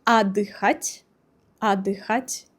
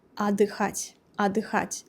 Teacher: the first vowel O is not stressed. Therefore, it is read like A.